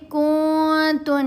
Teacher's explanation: غنہ کرتے ہوئے آواز ناک میں پڑی جاتی ہے اور 2 حرکات کی مقدار جتنا ٹھہرا جاتا ہے